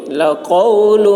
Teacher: قاف کی آواز موٹی ہوگی